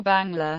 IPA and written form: bɑːŋlɑː (Bangla)